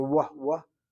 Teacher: You have Mizrahi Jews who basically will sound a Wah sound with the Vav. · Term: W sound